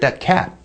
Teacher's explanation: your tongue just stays at the alveolar Ridge it doesn't actually release · And this very often happens in an utterance final position, like, hey, where did you get that cat? And your tongue just stays at the alveolar ridge. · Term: unreleased stop